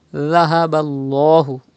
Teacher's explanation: there is Zabar before the Lam of Allah's name. It will be thick.